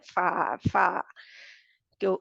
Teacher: इस्तेमाल होता है और दो दांत इस्तेमाल होते हैं फ फा ऊपर वाले दांत है दो आगे वाले और नीचे वाला होंठ जो है फा अंदरूनी हिस्सा जो गीला हिस्सा होता है वो